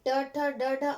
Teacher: जब ट ठ ड ढ अड़ बोलते हैं तो तालु के ऊपर जो मूर्धा है वहां से प्राण वायु बाहर निकलती है।